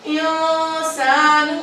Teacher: انسان، اب یہ دیکھیں نون جو ہے نون ساکن ہے اور سین جو ہے حرف اخفا میں سے ہے تو یہاں پر ہم نے اسی لیے چھپا کر غنہ کیا